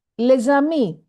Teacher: S is normally silent, but it is pronounced Z because ami begins with a vowel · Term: liaison